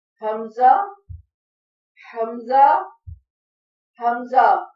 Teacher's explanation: حلق کے آخری حصے سے جو سینے کی طرف ہے حمزہ ادا ہوتا ہے